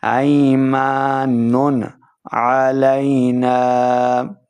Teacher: دیکھیں نون کے اوپر ہم نے بغیر غنہ کے پڑھا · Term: اظہار